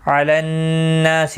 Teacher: علی الناس نون مشدد پر غنہ ہوگا، · نا الف مدہ ہے، ایک الف کی مقدار کے برابر کھینچ کر پڑھیں گے،